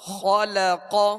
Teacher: خا اور قاف، اس کلمے میں خا اور قاف یہ دونوں حروف پر پڑھیں گے، موٹا پڑھیں گے، اس لیے کہ یہ حروف مستعلیہ میں سے، اور لام کو باریک پڑھیں گے.